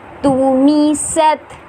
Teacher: سین جو ہے وہ سیٹی والا حرف ہے تو ہمیں سین کو ادا کرتے وقت سیٹی والا ساؤنڈ دینا ہوگا